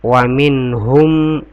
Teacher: Jadi di sini wa min nun sukun ketemu dengan ha itu dibaca jelas ya. Maksudnya jelas itu jelas sini nun sukunnya. · wa min dan tidak didengungkan di sini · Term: izhar